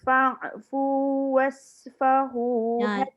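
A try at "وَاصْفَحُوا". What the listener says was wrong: Sad. Was. Jadi sin. Was. Tu baru sad.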